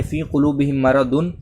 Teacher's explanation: میم ساکن کے بعد میم ہے تو ہم لوگ گننا کر رہے ہیں